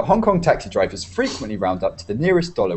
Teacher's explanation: so emphasize frequently and nearest